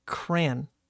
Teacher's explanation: I think my whole life I have said Cran like one syllable